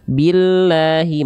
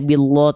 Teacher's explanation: jalalah ya di sini atau lam pada lafaz Allah di sini dibaca harus tipis dengan vokal a ketika didahului huruf-huruf berharakat kasrah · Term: tarqik lam jalalah